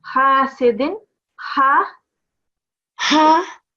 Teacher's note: The other thing is the ha sound. It's coming from your throat.